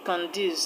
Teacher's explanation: Conduce is a 2 syllabic word, and the stress will go to the second syllable